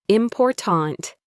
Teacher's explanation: In a word like important, the stress is on the second syllable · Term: word stress